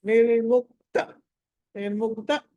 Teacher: నిర్ముక్త దగ్గర త దగ్గర దీర్ఘం తీయొద్దు త కట్ చేయాలి